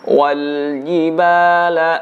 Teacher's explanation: huruf Jim tidak ada udara yang keluar